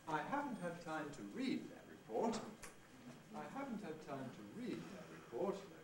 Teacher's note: Falling head, as is usual with a fall rise.